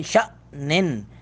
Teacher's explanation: شین کے بعد حمزہ ساکن ہے تو اس لیے جھٹکا تھوڑا سا لگائیں گے